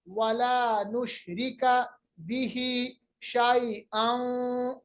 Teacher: दो जबर की आवाज को वाव के साथ मिलाएंगे, इदगाम बगुन्ना